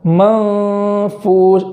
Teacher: اخفا کا طریقہ یہ ہے کہ نون کا جو مخرج ہے اس مخرج سے زبان جدا رہے، قریب مخرج کے تو جائے مگر زبان جدا رہے، اور گناہ سے خیشم سے اس کی ادائیگی ہو اور ایک الف کے برابر تاخیر کریں گے.